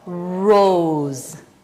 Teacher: 얘는 장모음으로 가면 오우로 발음해야 돼요.